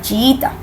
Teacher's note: tenemos el caso de hiato simple cuando estamos frente a dos vocales cerradas iguales